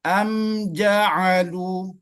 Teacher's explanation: jim itu berada di Tengah lidah Tengah lidah